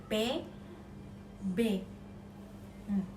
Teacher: yang dihasilkan di antara bibir itu p b yang kedua yang dihasilkan oleh ujung lidah dan